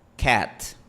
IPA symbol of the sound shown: æ